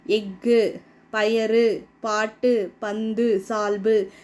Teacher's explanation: ஒரு மாத்திரைக்கு பதிலா அரை மாத்திரை அளவுதான் ஒலிக்கும் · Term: குற்றியல் உகரம்